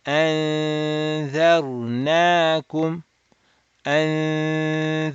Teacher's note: So you can go completely to the dal makhraj, keep your tongue there, and you will not be touching the noon makhraj. But so noon makhraj will not be touched, but you will open the nasal cavity and do 2 harakat of nasal sound.